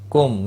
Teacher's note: میم ساکن کے بعد سا آیا ہے، اظہار شفی ہوگا، گناہ نہیں کریں گے